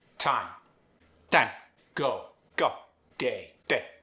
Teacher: The American accent loves those vowel glides. Singapore English, keep vowel clean. No glide. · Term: reduced diphthongs